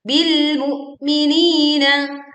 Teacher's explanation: kita menahan suara di hamzah sukun